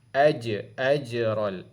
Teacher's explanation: Bagi melantun suara tu, sebab huruf jim ni adalah huruf qalqalah. Dia mati, dia berlaku qalqalah kat situ.